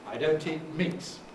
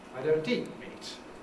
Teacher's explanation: I don't eat meat, with a fall on meat